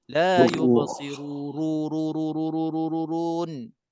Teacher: Memang dia penyebab jadi mad arid, tetapi dia tak kena mengena dengan qadar panjang. Qadar panjang pada huruf yang sebelum huruf mad, ru di situ. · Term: mad arid sukun